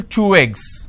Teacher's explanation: So I'm using way sound in between these two eggs. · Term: linking